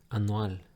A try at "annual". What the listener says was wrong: Annual. And you cut this Y sound that comes in English. Annual. Annual. This Y sound comes from nowhere in English and you cut it out because you focused on how it's written.